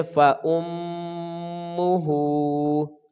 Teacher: ہا کے اوپر الٹا پیش ہے تو ایک الف کے برابر، یہ کھڑی حرکات میں سے ہے تو ایک الف کے برابر لمبائی ہوگی. پڑھیں گے فَأُمُّهُ، ہا الف مدہ ہے، واؤ کو جلدی پڑھیں گے، یا کو ہا کے ساتھ ملا کر وقف کر دیں گے.